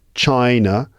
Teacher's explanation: So China, it's got two syllables in it, right? The first syllable is the stressed one, China, and the first syllable, the I, is pronounced with a full vowel sound, I, chai, but then the A, the vowel in that second syllable, is not pronounced as an A.